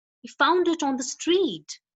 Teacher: the intonation, that is the voice basically, is rising to higher pitch at the end